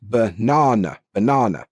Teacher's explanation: It's just like a neutral noise that we put in unstressed parts of the word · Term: schwa sounds